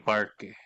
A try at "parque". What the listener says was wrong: i-pronounce ibuka mo ng mas malaki yung bibig parke